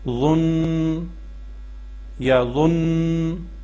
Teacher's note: جو نون کی آواز ہے اس کو ناک میں لے کے جانی اور تقریباً 1 سیکنڈ آواز کو ناک میں ٹھہرانا ہے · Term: غنّہ